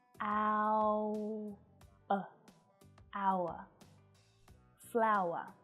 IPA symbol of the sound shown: aʊə